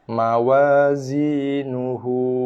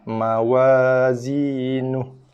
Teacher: Ketika kita menyambungkan bacaan, kita tak nak berhenti, nak sambung terus bacaan dengan perkataan selepasnya. Hu ni akan kita baca dengan kadar 2 harakat.